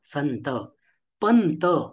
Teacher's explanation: संत शब्दांमध्ये मात्र आपण अनुस्वाराचे उच्चारण न सारखं करतो